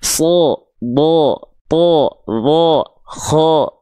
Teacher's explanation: Huruf-huruf tebal itu akan terdengar seperti O ketika berharokat fathah. · Nih, kalau huruf tebal, ya huruf yang karakternya tebal, itu ketika dia berharokat baris atas atau fathah yang keluar bukan bunyi vokal A, tapi dia akan terdengar seperti vokal O.